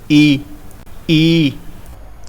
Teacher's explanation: जीभा तालव्य के भाग को स्पर्श करती है इन्हें उच्चारण करने में